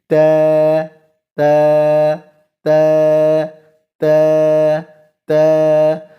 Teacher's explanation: اس کو ہم نے مفخم نہیں پڑھنا، مرقق پڑھنا ہے، باریک پڑھنا ہے